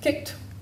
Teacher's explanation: we add t for a voiceless sound